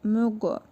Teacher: Qaf hərfinin üzərində cəzm var. Qalqalı hərfidir. Vurğulu tələffüz edirik.